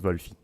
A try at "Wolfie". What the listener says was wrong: Wolfie, mais sans la pause. Wolfie.